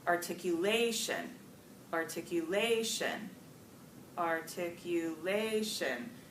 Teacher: not until that fourth syllable do we hear that primary punch-up primary stress all the other syllables are more weekly stress compared to that